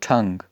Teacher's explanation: अगर हम इसको एस्पिरेट करेंगे ठंग होगा